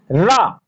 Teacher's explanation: रा में जिह्वा बेलन जैसे आकार को ग्रहण करके संघर्ष करते हुए बाहर निकलती है, इसीलिए रा को स्पर्श संघर्षी वर्ण कहा जाता है।